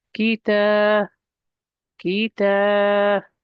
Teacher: Nice and short, ki. Then we're going to elongate the ta because of this mud letter, the alif.